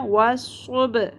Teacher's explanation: Basically it is a bouncing sound, با ساکن کو ہم نے باؤنس کروانا ہے، والصبح نہیں پڑھنا، والصبح، حاضر ہی، والصبح ح، وسط حلق سے اس کو ہے حلوہ کی طرح نہیں پڑھنا ہے، ٹھیک ہے۔ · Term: قلقلہ